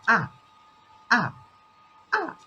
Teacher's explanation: It is, I think, one of the easiest tones. It is uh, just striking down, just directly down. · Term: fourth tone